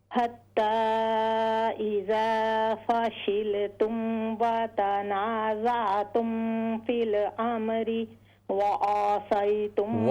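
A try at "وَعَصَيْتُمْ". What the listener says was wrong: आइन को लंबा न करें, वअसै आइन ज़बर आइन को लंबा न कीजिए, वअसैतुम मिन बअदि मा अराकुम मा अराकुम।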